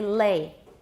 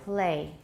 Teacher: Um when you say the whole word play, the l is typically voiceless and very different from the l in lay. Lay is clearly voiced. Play, it's devoiced. Say the l at the beginning of lay, and you'll hear it's definitely voiced.